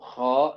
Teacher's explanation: Seperti itu ya, lidah belakang ya. Sebagian besar lidahnya itu naik ke langit-langit dan yang paling naik adalah lidah belakang. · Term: isti'la